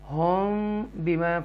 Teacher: यहाँ पर इख्फ़ाए शफ़वी है क्योंकि मीम साकिना के बाद ये बा आ रहा है, तो हम यहाँ गुन्ना करेंगे